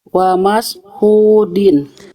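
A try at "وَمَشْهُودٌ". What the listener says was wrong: Nah, bagus.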